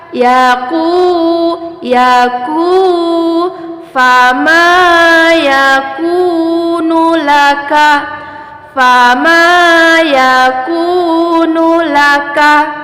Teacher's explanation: waw sukun dipanjangkan 2 harokat.